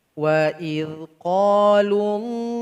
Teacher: Di sini ada lafaz jalalah yang mesti ditaglizkan, ditebalkan bacaannya. Jangan sampai dibaca wa idh qalullahumma, salah.